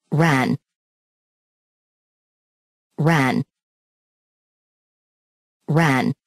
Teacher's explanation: the tongue is tense and moves from mid High to the floor of the mouth